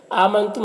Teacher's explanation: آمنتم حمزہ میں کھڑا زبر ہے، یہ الف مدہ کی طرح ہوتا ہے، اسے ایک الف کے برابر کھینچیں گے۔